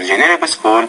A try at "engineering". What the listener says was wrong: So engineering, so I think that's a word stress issue. You're just not putting the stress on the right part of the word. Remember that word stress, you got to make the stress syllable louder, longer, clearer, and also higher pitch.